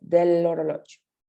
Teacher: tiene una como pronunciación como pues pegada, como si fuera una sola palabra